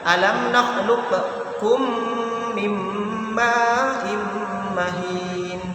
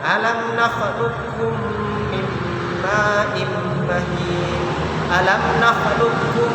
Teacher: Nah, ini makhrajnya berdekatan tadi, qaf dan kaf berdekatan, tapi salah satunya mati, salah satunya hidup, maka idghamkanlah, maka qafnya itu langsung masukkan ke kaf, sehingga qaf yang awalnya qalqalah tidak usah dibaca qalqalah di sini walaupun mati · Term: idgham mutaqaribain